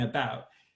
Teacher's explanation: one of the vowels will just say kind of an uh ish sound like in about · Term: schwa sound